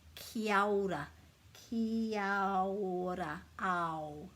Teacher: as most Māori people will say, they put this A and this O together, Kia ora, Kia ora, ao, like the beginning of Aotearoa, Kia ora, with a little bit of a roll on the R.